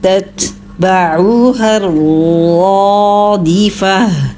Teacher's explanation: اس میں دیکھیے پہلا جو لفظ ہے وہ ہے تتبعوها، یہاں پہ پہلا تا جو ہے اس کے پاس زبر ہے اور دوسرا ساکن ہے، تو ساکن کو آپ نے ہمس کے ساتھ ادا کرنا ہے، اچھا واضح ہو اس میں ہمس۔ تتبعوها الرادفہ، پھر تتبعو، آئین کو اچھا کلیئر کیجئے، آئین کے اوپر پیش ہے، ہونٹوں کو گول کیجئے۔